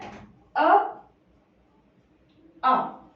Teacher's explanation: अ जो है वो कहां से उच्चारित होते हैं, कंठ से उच्चारित होते हैं